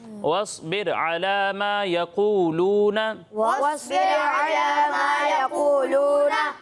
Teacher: صاد کو بھی پر پڑھنا ہے اور قاف کو بھی پر پڑھنا ہے